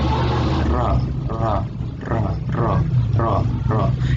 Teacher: keluarnya huruf ini tepat berasal dari ujung lidah dan menempatkan lidah pada langit-langit mulut atas. Ujung lidah berarti ya, ujung lidah menempatkan lidah pada langit. · Dia kayak ra, cuma karena posisi mulutnya agak bulat, jadi dia agak kayak ro. Sebenarnya bukan ro, tapi dia ro, ro, ro, ro. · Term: huruf ra